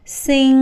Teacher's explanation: the back of your tongue lips up and presses your soft palate. That's the soft part at the very back of the roof of your mouth just before your throat. · the air flows through your nose, and that's what make it a nasal sound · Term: ng sound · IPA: /ŋ/